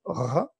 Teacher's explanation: c'est le dos de la langue qui vient sur le voile mou du palais et qui implique aussi la luette pour prononcer ce R grasseyé.